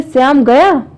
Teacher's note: अगर मैंने एकदम से श्याम गया एक आश्चर्य सा व्यक्त कर दिया, तो वहां पे एक अलग सुर में प्रयोग कर लिया उसको